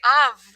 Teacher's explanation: in of we don't stay off with an F we say of with a V mmm right even though it's spelled off when we say sounds